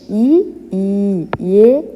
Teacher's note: ఈ అంటున్నప్పుడు ఈ నాలుక యొక్క చివరి భాగం తాలు వైపు గాని దంతాల వైపు వస్తుంది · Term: అగ్రాచులు